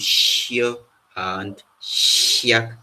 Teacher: And then we have the longer palatal version of the sh sound